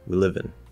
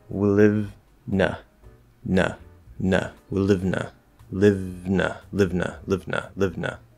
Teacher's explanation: now live has a w in front of it and an n after it and it's all just one word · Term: eat those vowels